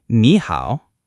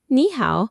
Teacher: Your mouth doesn't want to dip twice in a row. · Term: two third tones